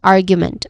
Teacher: argument which has three syllables. The stress is on the first syllable which is r which is a short uh vowel sound.